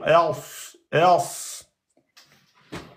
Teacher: Il faut rentrer un peu plus la langue, la soulever plus vers l'arrière et prononcer d'une emphatisation. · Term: lettre emphatique